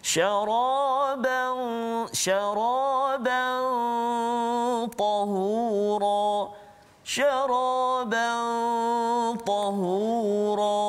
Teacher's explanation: Huruf ta hujung lidah, dan ditekan dekat gigi kapak atau gigi kacik belakang tu kan.